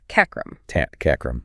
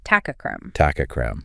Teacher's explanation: When these join up, the final T in tat changes to match the C that follows it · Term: assimilation